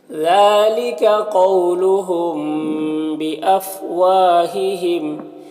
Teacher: قاف حروف مستعلیہ میں سے پر پڑھیں گے، یہاں پر واولین سے نرم آواز کے ساتھ جلد پڑھیں گے۔ میم ساکن کے بعد با ہے، تو اخفا ہوگا، اس کو اخفاء شفوی کہتے ہیں۔ واو میں الف مدہ ہے، ایک الف کے برابر کھینچیں گے، اس طرح سے۔ · ذال میں کھڑا زبر ہے، اسے ایک الف کے برابر کھینچیں گے۔ قاف حروف مستعلیہ میں سے پر پڑھیں گے، یہاں پر واولین سے نرم آواز کے ساتھ جلد پڑھیں گے۔